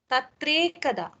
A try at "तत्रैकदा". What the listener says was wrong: एकारस्य परिवर्तनं भवति किल? Okay, so it is not like you just kill the akara and keep the ekara.